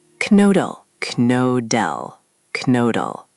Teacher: The O sound is tricky for English speakers. It's like saying E, but with rounded lips.